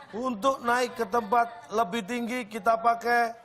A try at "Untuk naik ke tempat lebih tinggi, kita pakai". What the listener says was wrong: Datar banget. Untuk naik ke tempat lebih tinggi pakai. Yang benar Pak intonasinya Pak.